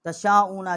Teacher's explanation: شین الف مد شا، یہ بھی بڑی مد ہے، 4 الف جتنا یہاں آواز بلند کیا ہے